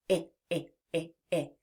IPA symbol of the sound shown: ĭ